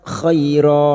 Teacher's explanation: Sekarang di sini kita wasal maka kita langsung menguraikan pada kalimat khair fathah bertemu ya sukun kita lunakkan huruf lin